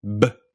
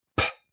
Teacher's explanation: What you should feel is that there's a big puff of air when you say P. And that puff of air is aspiration. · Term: aspirated consonant